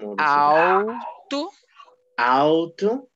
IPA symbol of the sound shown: u